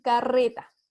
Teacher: el fonema R vibra muchísimo más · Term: R vibrante